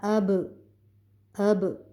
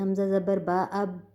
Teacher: با کے اوپر ہم نے آواز کو تھوڑی سی جنبش دی، نہیں تو اگر ہم نے قلقلہ نہ کرنا ہوتا تو ہم اس کو سیدھا ہی پڑھ جاتے ہیں، حمزہ زبر با اب، یہ ہونٹوں کو بند کیا اور بالکل بھی جو آخر میں آواز میں جو جنبش پیدا ہوئی وہ بالکل نہیں ہوئی۔